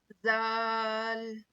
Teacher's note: जुबान की नोक को सामने के दो दांतों के जड़ में लगाने से दाल अदा होता है।